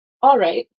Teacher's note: you might not always pronounce the L very distinctly